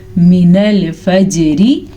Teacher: جیم پہ کلکلا ہو رہا ہے